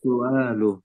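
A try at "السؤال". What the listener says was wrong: Pakai hamzah ya, bukan as-su'alu, bukan pakai ain. Kalau pakai ain artinya apa? Kalau pakai ain artinya batuk. Nah, berarti nanti artinya batuk. Kalau pakai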